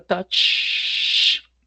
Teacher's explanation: es la palabra touch. No genera vibración al final. Si gusta, se toca la garganta, ¿sí?